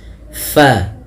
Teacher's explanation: huruf Fa salah satu sifatnya yaitu dia hams mengalirnya nafas